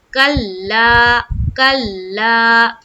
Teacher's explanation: سب سے پہلے یہاں دیکھیں کلا، لام کے اوپر کیا ہے، تشدید ہے، تو ہم کاف کو لام سے ملائیں گے، ایک قسم کی سختی بنائیں گے، کیونکہ یہاں پر لام کے اوپر کیا ہے، تشدید ہے۔ تو ہم کیا پڑھیں گے، کلا کلا، اس طرح سے الف مدہ کرتے ہوئے پڑھیں گے، الف مدہ، کلا کلا کلا کلا، اس طرح سے پڑھنا ہے۔